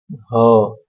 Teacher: છે નેક્સ્ટ છે મર્મર વ્યંજન ઝીણો ઝીણો નાદતંત્રીમાં કંપન કરે હ તમે હ બોલો ત્યારે મુખપથમાં એક ઝીણો ઝીણો કંપન ઉત્પન્ન થતું હોય છે · તમે હ બોલો ત્યારે મુખ પથમાં એક ઝીણો ઝીણો કંપન ઉત્પન્ન થતું હોય છે, એને મર્મર વ્યંજન કહે છે.